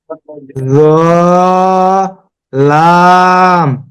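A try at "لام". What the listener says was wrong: জালের মতো শোনা যাচ্ছে। লাম।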